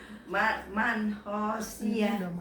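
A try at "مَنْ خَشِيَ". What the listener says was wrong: Khonya pendek ya. Man khosyia. Khonya pendek. Man khosyia.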